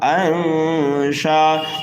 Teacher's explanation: یعنی نون ساکن کی آواز کو ناک میں چھپا کر 1 الف کے برابر غنہ کر کے پڑھیں گے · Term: اقفا